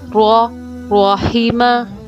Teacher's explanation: آگے دیکھیے، را۔ مخرج، زبان کی نوک اوپر کے مسوروں کے قریب لگتی ہے، ہلکی سی جنبش ہوتی ہے